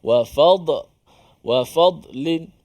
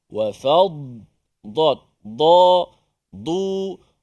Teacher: Huruf dad, ingat huruf dad tidak ada dia punya detakan ataupun pantulan walaupun dia mati.